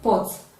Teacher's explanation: It is released suddenly, such that it causes a minimal vibration in the throat. So it is a voiceless bilabial plosive sound